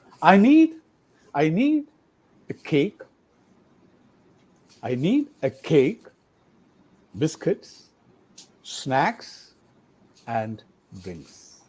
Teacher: last one should be falling tone, and all other items in the list should be rising.